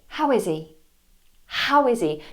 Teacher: notice I put the initial H on that's important it's a stressed syllable